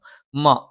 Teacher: മ രണ്ട് ചുണ്ടും തുല്യമായി അടച്ചു വെക്കണം.